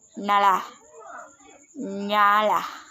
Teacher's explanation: ciri-ciri hidup, nasal, laminopalatal